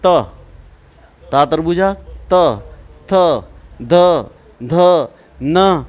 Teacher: इन वर्णों को दंत से बोला जाता है दंत मतलब ऊपर के दांतों के पिछले हिस्से से